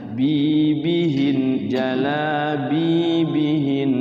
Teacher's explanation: Bi-nya 2 harokat, kemudian waqafnya guna.